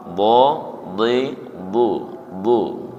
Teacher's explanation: bukan di ujung lidah tapi di sisi lidah menyentuh ke graham